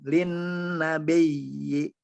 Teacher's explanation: nanya tidak panjang, linnya yang panjang